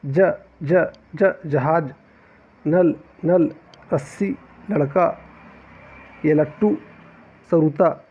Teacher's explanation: जो नोक जिसे बोला जाता है, वह दांत और मसूड़ के पास में जाकर टकराता है। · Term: वर्तस्य व्यंजन